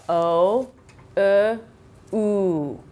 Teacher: my jaw comes back up again up again to slowly morphing into a round sound so I'm at a and I come up to a o